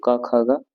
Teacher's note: यह कंठ से बोली जाती है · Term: कंठ ध्वनि